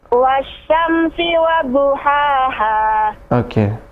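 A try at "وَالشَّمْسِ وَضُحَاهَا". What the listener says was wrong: Jadi tadi yang pertama agak terdengar wasyamsi wa, tidak boleh tidak langsung aja ketika ada tasydid seperti ini ya. Wasyamsi.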